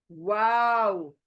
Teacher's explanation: आपको वाव बोलते वक्त होंठों को गोल ही करना है, तब एग्जैक्टली प्रोनाउंस होगा वाव।